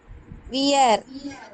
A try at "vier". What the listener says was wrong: fear. நான் வி என்ன சொல்லியிருக்கேன்? ஃபவ் ப்ரொனவுன்ஸ் பண்றோம் இல்லைங்களா? ஆல்பபெட்ல வி என்ன சொல்றோம்? ஃபவ் தானே சொல்றோம். ஃபியர் தான் வரும்.